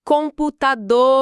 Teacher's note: A sílaba dor é a que se estica, é uma oxítona.